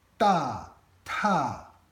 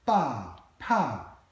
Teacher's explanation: this aspiration without any difference in voicing is the only difference between lots of consonant pairs in Chinese